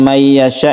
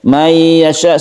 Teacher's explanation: ini kita dengungkan karena dia itu nun mati bertemu dengan ya yang kita sebut dengan Idgham Bighunnah